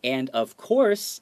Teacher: make sure the intonation goes up to emphasize that we're talking about the main theme of this whole excerpt